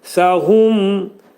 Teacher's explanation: Hu incə. Mim izhar edirik. Ağız yumulur. Dodaq hərfidir.